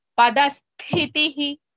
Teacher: ತ ವಿತ್ ಸ ಇಸ್ ಮಹಾಪ್ರಾಣ ದ ನೆಕ್ಸ್ಟ್ ತ ಇಸ್ ಅಲ್ಪಪ್ರಾಣ